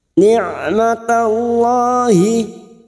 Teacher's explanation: ain sukun yang memiliki sifat tawasud, suara antara tertahan dan terlepas ketika mengucapkan huruf tersebut. Maka bunyinya ni'matallahi.